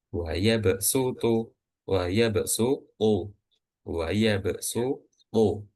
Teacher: sod itu nggak lagi dinaikkan pangkal lidah yang bagian dalamnya itu, karena udah diganti menjadi huruf sin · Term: dibaca dengan sin